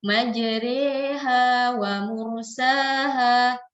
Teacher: kita condongkan bunyi alif ini, bunyi fathah ini ke arah bunyi kasrah. Jadi bukan kita baca majroh, bukan kita baca majeri, tapi di tengah-tengah itu yaitu majreha wa mursaha. · Jadi bunyinya bukan A, bukan I, tapi di antara itu E bunyinya. Jadi E itu adalah vokal ya di antara vokal fathah dengan kasrah. Fathah bukan, kasrah bukan ya. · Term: imalah